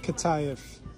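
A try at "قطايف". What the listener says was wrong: It's not kataif, honey. It's atayef. Atayef.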